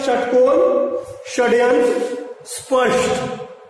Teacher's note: मूर्धन्य जो पीछे जो तालू होता है उसके और पीछे वाले भाग से आवाज जो निकलता है श, वो श होता है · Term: मूर्धन्य श